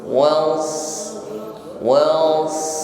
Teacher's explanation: ketika shad sukun adalah sifat hamas, jariyatun nafas, alirkan nafas.